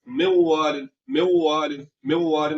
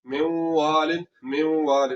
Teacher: मगर यहाँ पर नून की आवाज को गायब नहीं करना, नून की आवाज को हमने गुन्ने में तब्दील कर देना है। नून की आवाज जो है वो गुन्ने की सूरत में आएगी, मेवालिन, मेवालिन, ठीक हो गया।